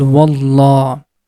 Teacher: with heavy sound when there is before the name of Allah that time we are going to pronounce letter Lam with heavy sound